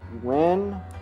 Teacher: oh but you're not pronouncing the h